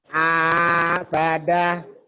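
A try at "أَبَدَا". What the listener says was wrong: Abada. Kurang sedikit, Pak. Abada. Lebihin dikit.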